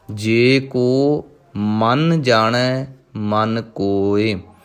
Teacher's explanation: ਪਹਿਲਾ ਮਨ ਜੋ ਮੰਮੇ ਉੱਪਰ ਟਿੱਪੀ ਲੱਗੀ ਹੋਈ ਹੈ, ਇਸ ਕਰਕੇ ਥੋੜ੍ਹਾ ਜਿਹਾ ਕੱਸ ਕੇ ਬੋਲਣਾ ਹੈ।